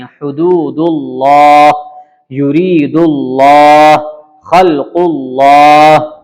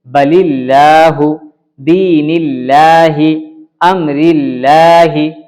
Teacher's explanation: اللہ سے پہلے اگر زبر یا پیش ہو تو لام کو پر پڑھیں گے اور زیر ہو تو باریک پڑھیں گے